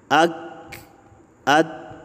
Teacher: اور حمزہ کاف اور تا میں سکون کی حالت میں آواز سختی سے بند ہو جاتی ہے، کاف تا میں تھوڑا سا سانس بھی نکلتا ہے